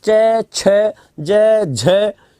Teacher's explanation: पहले तीसरे में मुख से हवा कम निकल रही है